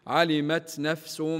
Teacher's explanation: كلمه نفس التنوين فوق حرف السين فوق حرف السين هو متتابع بعده حرف الميم حكمه الادغام مع الغنه